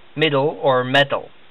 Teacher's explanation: this T is pronounced a little more like the English letter D like in middle or metal